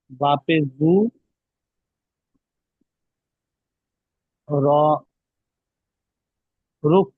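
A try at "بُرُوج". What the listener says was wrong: রুহ কেন দেখেন, বুরুহ না, এখানে রয়ের পরে দেখেন ওয়াও আছে, ওয়াও এর পরে জিম আছে, পেটে নোক্তা আছে না? তাহলে দুটো সাকিন যখন একসঙ্গে হয় তখন কেমন ভাবে পড়তে হবে দেখেন। দুটো সাকিনকেই আগের অক্ষরের সাথে মেলাতে হবে, যেমন রয়ের সাথে দুটো সঙ্গে ধরে পড়তে হবে। র, ওয়াও, জিম, পেশ, রুজ, বুরুজ।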